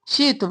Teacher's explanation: حمزہ پر جھٹکا کیونکہ جزم ہے